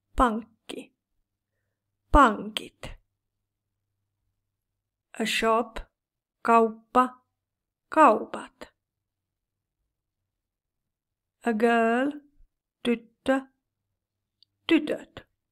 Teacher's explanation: If the basic form has a double consonant of k p or t in the stem, it is reduced to one consonant only. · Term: KPT change